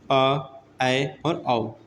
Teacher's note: अर्ध विवृत स्वर, ठीक है। इसमें क्या होता है? मुख आधा खुला हुआ होता है